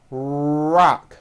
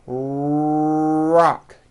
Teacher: my lips are coming forward and my tongue moves back in my mouth, and I push out the R sound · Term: American R